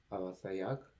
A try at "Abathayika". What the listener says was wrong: Abathayika. So I'm just saying, just smooth it out so it doesn't sound so kind of choppy. So you're not just like Abathayaka, Abathayika. Just smooth it out.